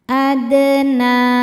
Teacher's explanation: A dal sukun hukumnya qalqalah sugro karena ada huruf qalqalah yaitu dal yang sukunnya sukun asli dan ada di tengah bacaan. Dalnya kita pantulkan dengan pantulan yang kecil. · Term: qalqalah sughra